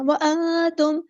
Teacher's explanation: وأنتم میں اخفا باریک کرنا ہے